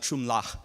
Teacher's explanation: giving a hint that the chum ends in a bilabial nasal sound, an M